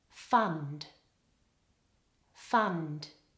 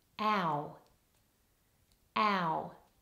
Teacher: the top one has the short vowel our fund fund that's very different to found which has the double vowel or diphthong vowel